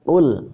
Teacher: jangan kul biasa. Kalau kul itu kaf. Qaf itu lebih dalam.